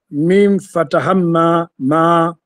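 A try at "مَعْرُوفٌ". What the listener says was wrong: Mim ina shadda she. Kuwa makini. Ain sakna. Ma. Hapo unasema mim shadda fatha ma ain sakna ma ra dhamma ru waw madda ma'ru fa dhammatin fun ma'rufun.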